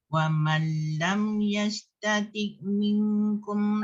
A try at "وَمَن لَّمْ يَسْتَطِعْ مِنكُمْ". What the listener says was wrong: Ain tu sikit dia macam ada bunyi macam dia ada terlebih tu. Yastati'